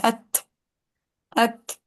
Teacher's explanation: हल्की सी हमस होती है ता में, बिल्कुल लाइट से, इतना कि सुनने वाले को पता लग जाए कि अच्छा ता पड़ा गया, अत अत।